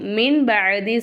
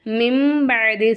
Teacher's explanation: நூனே சாக்கினுக்கு அடுத்ததா பா வந்துச்சுன்னா நூனே சாக்கின் நம்ம என்ன செய்யணும் மீமா மாத்தி உச்சரிக்கணும் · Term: யகலாபுடைய சட்டம்